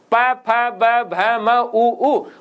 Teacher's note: प फ ब भ म उ दोनों होठों के बिना नहीं बोले जा सकते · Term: औष्ठ्य वर्ण